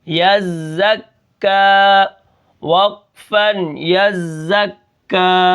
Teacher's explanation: تو یہاں پر کیا ہے، یا کو میں نے زا کے ساتھ ملایا، پھر زا کو کاف کے ساتھ، پھر کاف کے اوپر جو حرکت ہے یعنی کھڑا زبر ہے میں نے اس کو ایک الف کے برابر کھینچ کر پڑھا